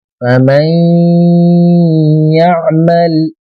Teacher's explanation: नून के ऊपर जज़म रहेगा और या पर तशदीद रहेगा तो नून की आवाज या की आवाज में मिला के पढ़ेंगे